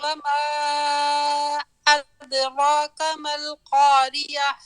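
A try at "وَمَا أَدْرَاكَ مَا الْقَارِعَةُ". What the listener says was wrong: یلا یہ ہمارے پاس یہاں ہے مد واجب میں 4 یا 5 انگلیاں کھولیں گے. یلا آپ نے تقریباً 3 سے کم کھولے، یعنی 4 اور 5 نہیں ہوئے.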